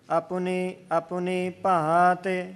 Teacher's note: ਆਪਣੀ ਦੇ ਵਿੱਚ ਪੱਪੇ ਦਾ ਔਂਕੜ ਛੱਡਣਾ ਨਹੀਂ, ਇਸ ਨੂੰ ਉਚਾਰਨ ਦਾ ਹਿੱਸਾ ਬਣਾਉਣਾ ਹੈ ਜੀ